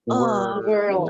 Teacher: Coba pakai suara E tapi dimunyungin karena ada R. World. Bukan langsung O, bukan world, bukan, tapi pakai suara E.